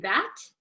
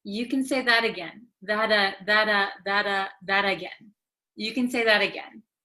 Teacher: Because it is between an A and another A. So when a T comes between two vowels, in American English, it becomes like a soft D sound.